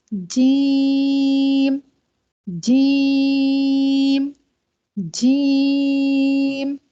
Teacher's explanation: जुबान का दरमियानी हिस्सा ऊपर तालू पर लगता है तो एक हर्फ अदा होता है · آخری لیٹر ہمارا جیم ہے. زبان کا درمیانی حصہ اوپر تالو پہ لگتا ہے